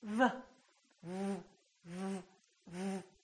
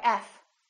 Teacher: are exactly the same look at my lips v- fv- F the position of the lips is the same except one is voiced and one is voiceless one uses the vocal cords and one doesn't so why is